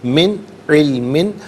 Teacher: من میں نون ساکن کے بعد عین حرف حلقی ہے، تو یہاں نون ساکن کو اظہار کے ساتھ پڑھیں گے، غنہ یا اخفا نہیں کیا جائے گا۔